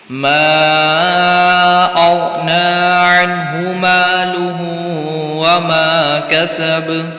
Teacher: बहुत से लोग मागना पढ़ते हैं, इसको खींचते नहीं है, हालांकि मुद्दे मुनफसिल का कायदा लग रहा है यहाँ पर। तो यहाँ पर इसको खींचना है और अग़ना गैन को यहाँ पर हिला देते हैं।